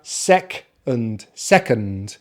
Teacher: the tongue comes forward in the mouth so first syllable sec second syllable is the reduced syllable so we use the schwa · second has two syllables the stress is on the first syllable sec and that contains the short vowel sound e as in